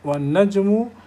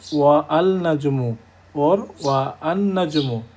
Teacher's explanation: উচ্চারণটা ওয়া থেকে শুরু হয়, ডাইরেক্ট নুনকে গিয়ে ধরবে